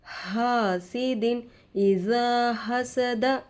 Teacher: دال پر دو زیر آ کر ہے تنوین ہوگا. تنوین کے بعد حروف حلقی میں سے حمزہ آ کر ہے. نون کی آواز کو ظاہر کر کے بغیر غنہ کے جلد پڑھیں گے. اس کو اظہار کہتے ہیں.